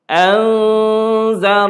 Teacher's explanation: Anzartahum, ini ikhfa hakiki, nun mati bertemu dengan zal. Tengok dia punya cara dengung ni macam mana. Tidak izhar, dengung tapi tidak izhar.